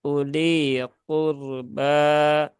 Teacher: karena roknya berhubungan dengan dhammah, maka rok sukunnya dibaca dengan tebal, tidak dibaca dengan tipis